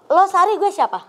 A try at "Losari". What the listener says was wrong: Mbak, itu nama Pantai Losari. Jangan dipisah Losari. Bukan Losari gue siapa.